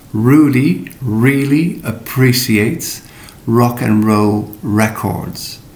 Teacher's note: you don't have this trilled like a mandolin you know a tremolo but you pull back your tongue a little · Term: english road r